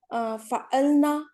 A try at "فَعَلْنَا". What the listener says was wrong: نا تھوڑا سا لمبا, فعلنا,